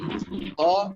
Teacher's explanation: menebalkan huruf kho dengan cara mengangkat pangkal lidah ke arah langit-langit, kemudian gemakan suara di sekitar mulut dengan suara yang penuh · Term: huruf yang tebal